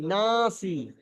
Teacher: আলিফের পূর্বে যে নুনটা এসছে, এই নুনটা হলো বারিক, বারিক অক্ষর, সেই জন্য আলিফটাও বারিক পড়তে হবে।